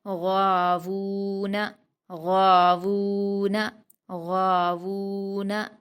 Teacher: واو پر الٹا پیش ہے، اس کو واو مدہ کی طرح 2 حرکات کھینچ کر پڑھیں گے۔ نون پر حرکت ہے، اس کو جلدی پڑھیں گے۔ · غین پر الف مدہ ہے، اس کو 2 حرکات کھینچ کر پڑھیں گے اور غین کو پر پڑھیں گے۔ واو پر الٹا پیش ہے، اس کو واو مدہ کی طرح 2 حرکات کھینچ کر پڑھیں گے۔